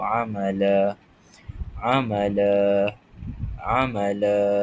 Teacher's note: Okey, kita telah terangkan tadi mawad ni ada yang dibaca dua harakat sebagai ganti kepada tanwin fathah baris dua di atas ketika diwakafkan. Jadi cara bacaan dia kita panjangkan sepanjang dua harakat dan kita anggap dia sebagai satu baris fathah sahaja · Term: mad iwat